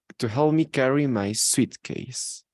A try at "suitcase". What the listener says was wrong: Instead of sweet, it's only going to be suit, my suitcase. look, if you say, for example, what do you think is the difference between sweet and suit? Because look, the writing is like this. This is a suite, but this is a suit.